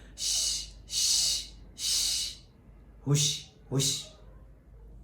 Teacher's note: فرق جیم اور شین میں یہ ہے کہ شین کے اندر آواز منہ میں پھیل جاتی ہے، شین کے اندر آواز منہ میں پھیلتی ہے پھر باہر نکلتی ہے